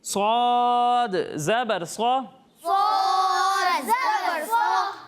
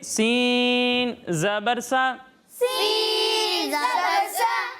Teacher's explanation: صاد حروف مستعلیہ میں سے ہے، کن میں سے ہے؟ حروف مستعلیہ، حروف مستعلیہ میں سے ہے، اور سین کو ہم باریک پڑھیں گے